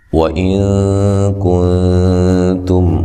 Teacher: وَإِن نون ساکن کا اخفا ہے